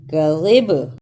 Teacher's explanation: رکنے کی صورت میں کذب، قلقلہ بھی کرنا ہے با پر